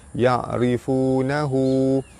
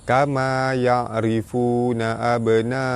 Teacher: ra baris bawah dibaca nipis, baris depan bertemu waw, mad asli panjang 2 harakat.